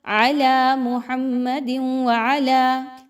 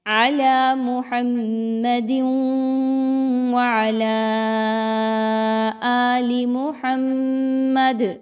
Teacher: محمد میم مشدد اور دال پر 2 زیر کی تنوین کے بعد حرف واو آ رہا ہے جو کہ ادغام کے بارے میں بتا رہا ہے کہ یہاں پہ ادغام ود غنہ ہوگا